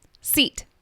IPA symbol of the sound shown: i